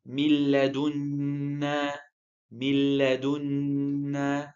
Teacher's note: between the first and the second part, you're not hearing a noon sound and you're not hearing a nasal sound.